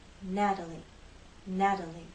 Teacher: we can also describe the flap t as a voice tap when you make the flap T you will feel vibration here